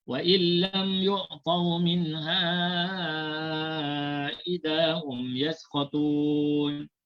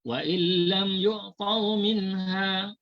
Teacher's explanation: Cara bacaannya dibaca 4 harakat ketika wasal dan diwaqafkan dengan 2 harakat. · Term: mad jaiz munfasil